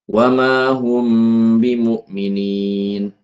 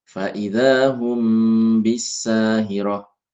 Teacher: Cara bacanya dengan menyamarkan mim. Mim disamarkan ya dengan mengatupkan kedua bibir disertai dengan dengung sekadar dua ketukan. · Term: ikhfa syafawi